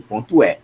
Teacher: no Ceará não existe vogal fechada, só existe vogal aberta